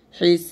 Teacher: যেহেতু এটা বা, বাটা কিন্তু কলকলা হরফ, তো এখানে আমি ওয়াকফ ধরলে বাটা সাকিন হয়ে যাচ্ছে এবং কলকলা হয়ে যাবে